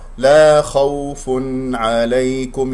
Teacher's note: الخاء هنا مفخمة مرتبة ثانية لأنها مفتوح، والواو واولين لا تضغط عليها لأنها ساكنة قبلها مفتوح